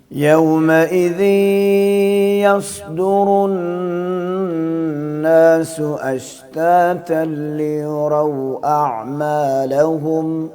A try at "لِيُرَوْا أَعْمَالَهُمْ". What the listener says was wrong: یوراؤ میں بھی را آئی ہے نا، وہ بھی زبر سے ہے، اس کو بھی موٹا کر کے پڑھنا ہے، باریک نہیں کرنا اس کو. باریک یوں ہوتا ہے لیوراؤ، یوں باریک ہے، ہم نے کیسے کرنا ہے موٹا، لیوراؤ، لیوراؤ، ٹھیک ہے، یوں کر کے پڑھنا.